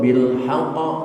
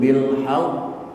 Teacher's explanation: Maka pantulannya juga ditahan. Kalau qalqalah kubra bil haqq langsung memantul qalqalahnya. Ini ditahan dulu bil haqq.